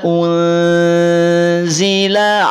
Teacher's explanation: Nun sukun semula dia n. Karena bertemu dengan zai, maka berubah jadi ang. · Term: ikhfa